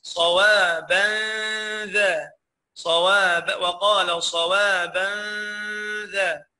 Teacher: ده تنوين وراء حرف الذال، تنوين الغنه بتاعته مرققه